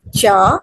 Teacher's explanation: the word cheap begins with the voiceless affricate cha